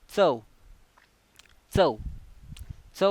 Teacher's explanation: दाताच्या मागील भागाला च चा स्पर्श होतो म्हणून हा च कोणता वर्ण आहे दंततालव्य वर्ण आहे